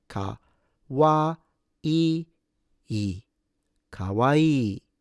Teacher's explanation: Well, the pitch is actually the same as almost the entirety of the adjectives in E, the finish in E in Japanese. Starts low, goes high, and then it returns low on the second E.